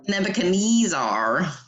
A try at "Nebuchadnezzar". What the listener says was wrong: Nebuchadnezzar. No, it's not even R. It's not even Kneezar. It's a Kneezer. Yeah, Kneezer.